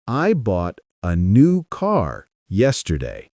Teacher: They carry the main meaning. Words like I and uh are said quickly, almost like background noise.